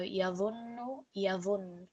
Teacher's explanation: we produce that nasal sound and we still put some stress on it, even though we were only applying the sukoon to the end of the word. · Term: shadda